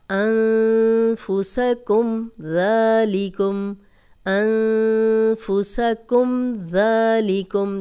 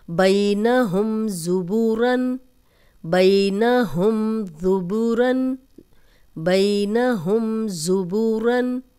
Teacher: जज़म वाली मीम के बाद हमने गुन्ना नहीं किया